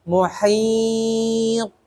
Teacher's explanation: di situ huruf mad i baru diwakafkan dimatikan dengan huruf tho karena tho Hurufnya huruf Qalqalah maka dipantulkan karena tho sifatnya istila dan idbaq maka ditebalkan